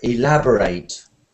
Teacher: when it is a verb, the stress goes to the end of the word